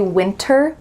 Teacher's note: You might hear native speakers say winter with a clear T if they're enunciating clearly and maybe speaking a little slowly. It's fine to do that, but when native speakers speak fast, you're gonna hear winter, winter.